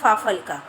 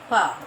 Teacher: तो ये जो नुक्ता वाला वर्ण है, ये कैसे उच्चारित होता है, हमारा निचला होंठ हमारे ऊपरी दांतों को छुआ